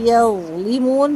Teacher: زبان کی نوک دانتوں سے باہر نکالیں گے، زبان کو پورا اوپر تالو کی طرف اٹھائیں گے تو ظا پر بھی ہوگا اور سافٹ بھی ہوگا